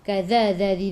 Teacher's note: hujung lidah keluar pada gigi depan, za 2 harakat ada alif kecil mad asli.